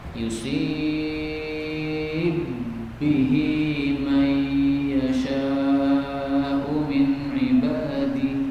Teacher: Ba dimasukkan dalam ba berikutnya. Yusib, tapi jadinya panjang, 6 ketukan. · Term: idgham